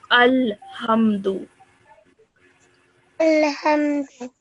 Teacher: Because the lam has a sukoon, you need to stop your sound there and then. You don't stretch it, you don't go up with your sound, you don't go down with your sound, you stop it there and then, okay?